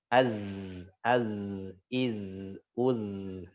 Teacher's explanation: Jadi shafir itu desisan yang khas, runcing dirasakan, dia runcing nggak menyebar. Kalau menyebar namanya tafasyi ya.